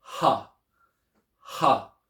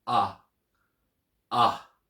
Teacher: a rough breathing over an alpha for example would make it pronounce h h with the smooth breathing it's just pronounced ah